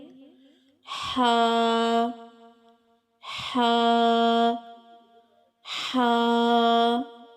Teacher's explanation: हा हलक के दरमियानी हिस्से से अदा होता है · چلیے دیکھتے ہیں کہ ہا ادا کہاں سے ہوتا ہے۔ ہا حلق کے درمیانی حصے سے ادا ہوتا ہے۔